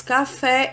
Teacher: a sílaba tônica é fé, é a última sílaba mais forte. Logo, fé vai ser oxítona.